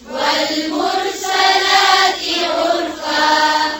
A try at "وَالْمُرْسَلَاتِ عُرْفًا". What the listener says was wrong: زیر کو اور باریک کریں.